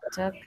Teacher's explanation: Anytime that you guys see the A, L, K sound, you don't have to pronounce the L